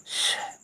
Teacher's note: मूर्धन्य में जीभ को मूर्धन्य में ले जा करके बोलिए श। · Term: मूर्धन्य श